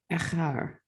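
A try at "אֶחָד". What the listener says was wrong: That's a dalet at the end.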